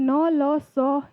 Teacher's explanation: जीभ हमारी दांत को टच करती है और संस्कृत भाषा में वत्स्य व्यंजन होते हैं। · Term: दंत व्यंजन